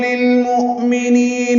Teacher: للمؤمنین لام ساکن پہ اظہار ہے، مؤمنین حمزہ ساکن جھٹکے سے ادا ہوگا، نی یا مدہ ہے، دو حرکات لمبا کریں گے.